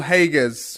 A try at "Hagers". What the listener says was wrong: And I think you're forgetting the R, but there's no bother.